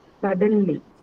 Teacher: Suddenly is an adverb. Hence, the stress is on First syllable.